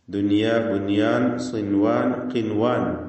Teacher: സാക്കിനത്തായ നൂനിനെ ഇളഹാർ മുത്തലാഖ് നൽകി മണിക്കാതെ വെളിവാക്കണം